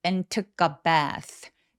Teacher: and의 D 발음은 열심히 잘 안 해요. 왜냐하면 접속사가 매우 중요한 키워드는 아니기 때문에 그냥 가볍게만 처리하기 때문입니다.